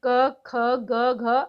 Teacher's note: व्यंजनों का वर्गीकरण व उच्चारण स्थान कंठ कंठ से है